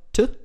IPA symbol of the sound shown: t̪